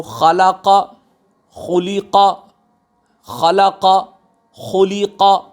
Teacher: خا ہمارا گلے کے اس حصے سے نکلتا ہے جو گلے کا وہ حصہ جو ہمارا منہ کی جانب ملا ہوا ہے، اس سے ہمارا غین اور خا نکلتا ہے۔